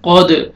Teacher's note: حروف میں سے ہے، قاف کو موٹا کر کے پڑھیں گے، دال ساکن ہے، قلقلہ کریں گے، ڈبل ساؤنڈ آئے گا